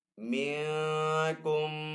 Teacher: ساکن کے بعد کاف حروف اخفا میں سے تو یہاں پہ اخفا والا غنہ کریں گے